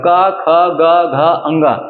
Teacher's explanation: हमारे गले से जब निकलते हैं तो सबसे पहले कंठ हमारा देखते रहे, तो कंठ से का वर्ग निकलेगा